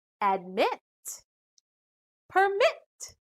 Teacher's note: every rule there are always exceptions like these two syllable verbs the final syllables contain short vowels but still the stress is on the second syllable